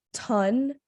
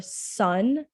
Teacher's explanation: they're taking that s the fricative sound and they're replacing it with a stop sound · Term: stopping